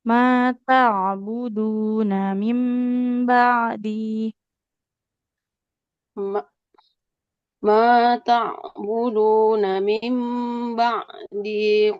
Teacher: huruf ainnya harus mengalir suaranya